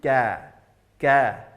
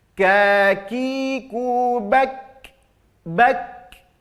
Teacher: sedangkan huruf kaf pangkal lidah agak naik sedikit. Kalau qaf di sini, kalau kaf naik, maka bunyinya biasa saja menjadi ka.